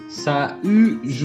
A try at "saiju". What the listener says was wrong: Perfeito.